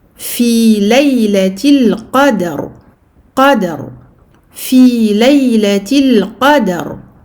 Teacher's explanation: Qaf mufakhama, dal muraqqaqa et qalqala.